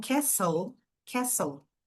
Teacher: no caso da palavra castle, castelo, a gente não fala esse som de T